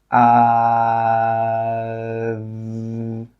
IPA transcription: ð